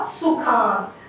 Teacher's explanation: सुख का अ और अंत का अ दोनों मिलके बन गए बड़ा आ, सुखांत। अधिक प्लस अधिक, अधिक में क का अ और अ का अ दोनों मिलके बन गए अधिकाधिक, यानी आ बन गया। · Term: दीर्घ संधि